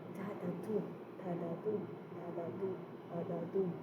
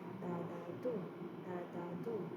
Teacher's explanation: the Anapest started with two unstressed syllables and then followed by its stressed syllables.